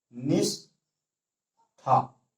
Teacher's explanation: देखने में कहने में सही लग रहा है, लेकिन गलत है, क्योंकि ये तालव्य सा का यहाँ प्रयोग हुआ है, और यहाँ पे जो हमारे उच्चारण करने से पता चल रहा है मूर्धन्य सा का प्रयोग होगा, वो भी आधा। जैसे निष्ठा।